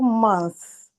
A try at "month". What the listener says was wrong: I was there for 2 months. But I'd love you to emphasize the TH sound in month. Month. So it's difficult to pronounce, but you can do it.